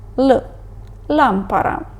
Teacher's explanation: вимовляється як український звук л але доволі м'яко